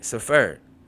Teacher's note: This word happens to be stressed on the first syllable.